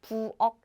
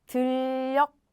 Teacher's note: When Korean people hear this uk sound, they cannot distinguish if the 받침 ends with 기억 or 키역 because the pronunciation is exactly the same.